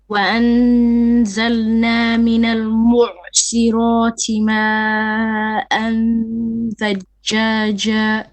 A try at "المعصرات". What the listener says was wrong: Okay, don't hold on to the ain. Let it go. Mu'si, and then sad is heavy. Mu'sirati ma'an thajjaja.